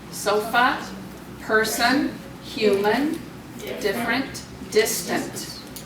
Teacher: What are all the vowels saying in all of those endings? They're saying the schwa sound